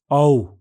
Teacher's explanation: औ इस स्वर के उच्चारण में स्वर यंत्र कंपन करते हैं और बेलम ऊपर उठता है। होंठ अधिक गोल हो जाते हैं और जीभ का पिछला भाग ऊपर की ओर उठता है। इसका उच्चारण ओ से अधिक समय तक होता है।